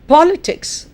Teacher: Politics, the stress on po.